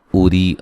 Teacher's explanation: را کو باریک پڑھا جائے گا، را کے نیچے زیر ہے اور یہ یا مدہ ہے